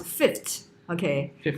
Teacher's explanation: So the change only found in some varieties, whereby the second fricative has been replaced by a voiceless stop t